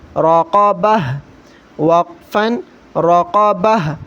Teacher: جب بھی گول تا آ جائے آخر میں تو وقفن کی صورت میں ہم اس کو ہا پڑھتے ہیں۔ کس طرح پڑھنا ہے، را زبر را، قاف زبر قا، راقا، با زبر با، راقبہ، تا دو زیر تن، راقبۃ، وقفن راقبہ، وقفن راقبہ۔